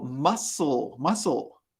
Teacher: In the word muscle, the C is silent.